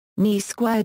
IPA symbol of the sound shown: nʲ